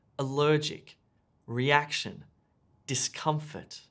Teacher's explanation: Finally, you have words that have emphasis or stress on the middle syllable.